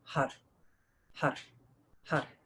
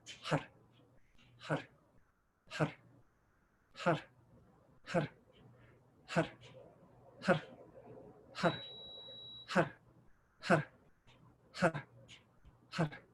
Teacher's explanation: Roll the R at the top of the roof of the mouth like a Spanish R. Pull in the belly every time you chant har, har, har.